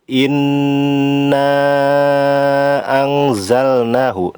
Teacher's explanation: inna anzalnahu, na dibaca panjang, namanya mad jaiz munfasil, panjangnya bisa 2, 4, ataupun afdolnya yaitu 6 harokat.